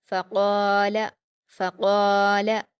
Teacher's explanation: क़ाफ पर अलिफ मद्दा है, 2 हरकत खींचकर पुर पढ़ेंगे